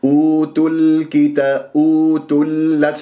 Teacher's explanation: أوتل، شوف تل كتابة، تل كتابة، اللام قمرية من الكتاب لأنه كاف متحرك بعدها، والكاف من أحرف القمرية، أبغي حجك وخف عقيمه. ولما تكون اللام قمرية يجب أن يجري فيها صوت فترة زمنية بسيطة.